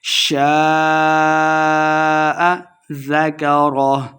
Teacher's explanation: شاء الف مدہ، اس کے اوپر مد بھی ہے تو ہم نے اس کو خوب لمبا کرنا ہے